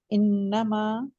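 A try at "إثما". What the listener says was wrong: ہے، یہ اسمن ہے. اب پہلے بھی آپ نے انما پڑھا ہے اس کو. میرا خیال آپ کو نقطے نظر نہیں شاید آ رہے نا اس کو.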